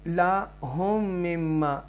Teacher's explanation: یہاں پر ادغام شفوی ہے کیونکہ ڈبل میم آ رہا ہے